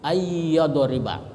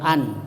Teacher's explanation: idegam itu artinya dimasukkan ya jadi nunnya itu dimasukkan ke ya Jadi tidak berbunyi Nun tetapi berbunyi ya Jadi ya Yang ditasdid ayya tapi berdengung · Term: idegam bigunna